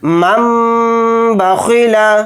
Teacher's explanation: ناک میں تھوڑی دیر آواز کو روک کر غنہ کریں گے